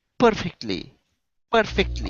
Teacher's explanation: The stress is at the beginning